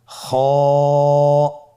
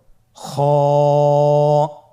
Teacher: খ হরফটির মাখরাজ হলো কন্ঠনালীর শেষ ভাগ হতে উচ্চারণ করতে হয়। কন্ঠনালীর শেষ ভাগ।